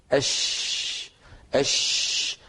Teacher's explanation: فلما نقول أش أش نجد بأن صوت الشين انتشر في الفم، وانتشاره هذا يعطيه قوة، ويعطيه حتى قوة في السمع كذلك. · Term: التفشي